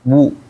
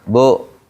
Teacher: Setiap domah dimonyongkan bu, ya. Jangan bo gitu. Babi bo. Jangan babi bu monyong.